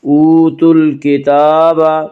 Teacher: وا مدہ کو ایک الف کے برابر کھینچ کر پڑھیں گے۔ اوتوا الکتاب، الف لام اگر حروف قمری کے شروع میں ہوں تو صرف لام پڑھ جائے گا، الف کو نہ پڑھیں گے۔